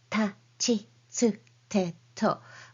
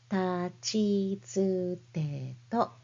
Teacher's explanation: You don't need to pronounce them with a strong puff of air like ta, chi, tsu, te, to, but rather softly